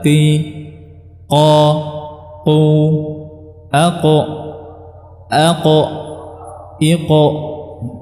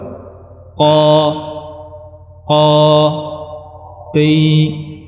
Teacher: Yang benar adalah qi, qa, qu, aqo, iqo, ya, dan seterusnya. Jadi ini huruf qaf, ya, yang dia sifatnya syiddah, artinya makhrajnya rapat dan tidak ada hamasnya, tidak ada udara yang keluar. Qa, qi. Dia juga termasuk huruf-huruf yang tebal, ya, karena pangkal lidahnya dia meninggi.